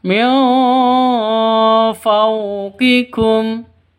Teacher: Terus ja'ukum min fawqikum, nun mati bertemu dengan fa. Cara bacanya samar, didengungkan, siap-siap ke huruf fa-nya. Karena ini ikhfa hakiki, samar.